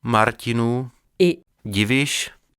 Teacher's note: les palatales T et D de Martinů, et Divíš